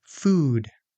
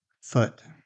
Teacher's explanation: you can think of oo as tense and round, while uh as relaxed and little less round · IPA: /u/ vs /ʊ/